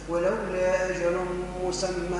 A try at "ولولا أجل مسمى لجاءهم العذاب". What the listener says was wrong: لا، ما عملتش غنى، قلت مسمى مسمى لجاءهم. أعمل غنى تلميذ.